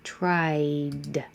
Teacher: Try ends with a vowel E, so your voice is on for all vowels, so leave it on. Tried, just a single D, and you will hear it because the word after it is a simple vowel.